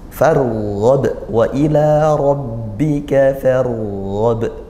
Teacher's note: ini ra-nya ra sukun dibaca tafkhim tebal